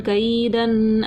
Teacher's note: دو زبر کی تنوین کو غنہ کر کے پڑھا